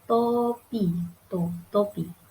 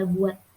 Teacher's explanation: jika berada di akhir kata, fonem T tidak diucapkan lepas. Bibir kita masih tetap rapat, tertutup saat mengucapkan bunyi.